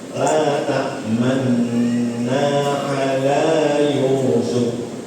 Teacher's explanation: Ketika kita baca man kemudian bibirnya nyampur dengan dhamma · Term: isman